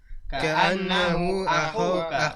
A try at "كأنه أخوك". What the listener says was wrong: Ka'annahu akhuka. Itu pernyataan ya. Jadi intonasinya itu tep. Ya, berhenti ya, bukan kata tanya. Ka'annahu akhuka.